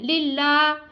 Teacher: اللہ کے لام سے پہلے حرف کے نیچے زیر ہے تو اس کو ہم نے باریک ادا کرنا ہے اور لام کو ہم نے کھینچنا ہے.